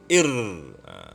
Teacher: Hujung lidah bergetar dan berulang-ulang ketika menyebut hurufnya. Ir. Kan dia masih ada 2 getaran, 3 getaran, itu sebut huruf. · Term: at-takwir